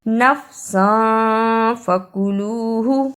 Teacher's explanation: اخفا ادا کرنے کا طریقہ، تنوین کی آواز کو تھوڑی دیر ناک میں چھپا کر غنہ کرنا ہے۔